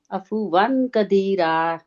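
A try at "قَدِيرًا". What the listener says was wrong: عفواً قدیرا، قدیرہ نہیں ہے نا، قاف موٹا ہے اور راب یہ را موٹا رہے گا کہ باریک رہے گا؟ موٹا رہے گا،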